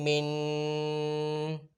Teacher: میم 2 زبر من، میم 2 زیر من۔ یہ جو میں لاسٹ میں ناک میں آواز کو چھپاتا ہوں اسے غنہ کہتے ہیں